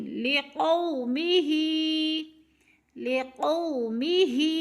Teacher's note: اس کو جلدی ادا کریں گے، یعنی جھٹکا بھی نہیں دیں گے اور کھینچیں گے بھی نہیں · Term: لین